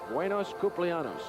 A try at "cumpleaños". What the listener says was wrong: That's pretty good, except you need the tilde, yos. Buenos cumpleaños.